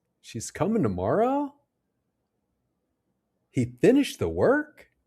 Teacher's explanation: The rising intonation makes these statements sound like questions and shows we're not completely sure. · when we're uncertain or not sure, we use rising intonation, even with statements